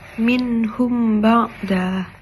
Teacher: Terdapat mim mati bertemu dengan huruf ba. Cara bacanya ditahan dan dengung. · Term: ikhf syafawi